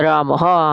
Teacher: तो विसर्ग लगी हुई है तो वहां से है जैसी ध्वनि आती है